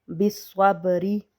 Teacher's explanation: با ساکن ہے اور با پہ ہم قلقلہ کریں گے، بالصبری۔ اور را کو بریک پڑھیں گے زیر کی وجہ سے